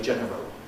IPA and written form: ˈʤenərəl (general)